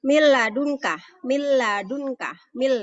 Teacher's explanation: Mil ladunka, mil, jadi langsung nun mati ketemu lam, jadi nun matinya langsung masuk ke dalam huruf lam. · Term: idgham bila gunnah